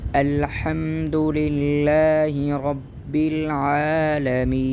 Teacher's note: یعنی حمزہ پر زیادہ سختی بھی نہیں کریں گے، زیادہ زور بھی نہیں دیں گے، بلکہ آرام اور نرم انداز میں ان کو پڑھا جاتا ہے۔